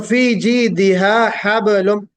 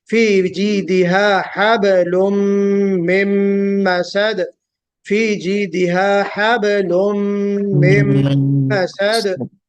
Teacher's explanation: बा पे कलकला होगा